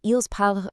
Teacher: the ENT ending for the ils and elles plural form is completely, totally silent. When you see ils parlent written out, it sounds exactly like il parle.